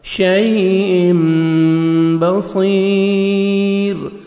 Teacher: صاد کو موٹا کر کے پڑھنا ہے، 1 سیکنڈ کھینچنا ہے